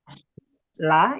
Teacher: ketika dibaca la itu pasti udaranya keluar dari samping-sampingnya juga gitu ya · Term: lam